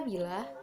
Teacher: Nah, pada kata bila, bunyi I dengan ciri tinggi, depan, dan tidak bulat